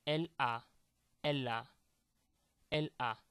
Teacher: This is a phenomenon called liaison. I'm making the liaison in French, trying to link two words to make it flow.